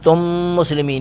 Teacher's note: میم ساکن کے بعد میم مشدد ہے، ادغام باغنا کریں گے